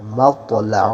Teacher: تو کو موٹا پڑے اور تو میں قلقلہ ہوگا